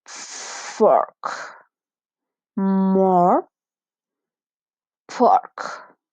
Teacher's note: the sound is similar to the O in Spanish, but in this case the pronunciation is longer. Fork, more, pork.